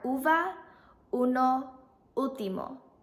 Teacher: English letter U is ooh in Spanish when used in words it sounds like the ooh in food it is more rounded in Spanish than English